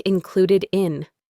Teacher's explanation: that d sound at the end can connect to the next word in. So it sounds like included in.